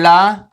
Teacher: ला हमारा पार्श्विक वर्ण है